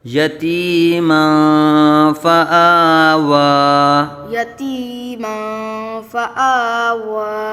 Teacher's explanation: يتيما فآوى میم کے اوپر دو زبر کی تنوین کے بعد حروف اخفا میں صفا آ رہا ہے، تو یہاں اخفا کا قاعدہ ہوگا، یعنی میم منون میں غنہ کر کے پڑھیں گے